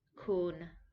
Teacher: It does not fall and it does not rise. It is not high or low. It's flat.